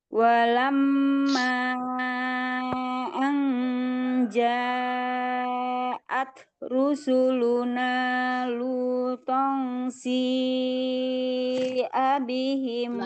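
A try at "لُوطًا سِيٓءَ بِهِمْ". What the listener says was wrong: Lama. lutong itu tahan. Ikhfa itu ada gunnahnya ya, tahan ya. rusuluna lutong si abihim.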